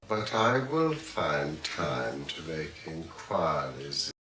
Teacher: Very clear vowel smoothing in inquiries and even time.